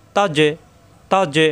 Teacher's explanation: তা যাবর তা, তা মেলবে জিমের সাথে, জিম সাকিন কলকলা, তাজ্জে তাজ্জে, এখানে কিন্তু বাড়ি খাবে, তাজ্জে বাড়ি খাবে, আর এখানে বাড়ি খাবে না, এখানে গলার ভিতরে আটকে যাবে, তা তা তাজ্জে তাজ্জে, জিম জিব্বার মাঝখানে উপরে তালুতে চাপ দিয়ে বাড়ি খাবে,